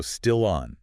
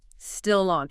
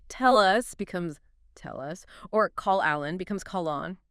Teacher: That final consonant sound naturally attaches to the following vowel sound. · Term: Consonant linking to a vowel